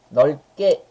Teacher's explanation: 표기는 리을, 비읍, 기역 3개 하지만 실제로는 리을과 쌍기역 2개까지만 발음이 되죠.